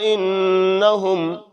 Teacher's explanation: الا مد ہے، لمبا کریں گے، چھوٹی مد ہے، انہم کے اوپر دیر لگائیں گے کیونکہ نون شد ہے۔